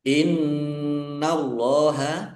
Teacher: nun tasdid bacaan ghunah dibaca mendengung ditahan biar tampak dengungannya · Allahnya dibaca tebal karena harakat di depannya fathah.